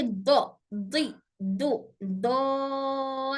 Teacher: दोनों जबान के दोनों किनारे दोनों दांतों से टच होकर हर्फ दौत अदा होता है।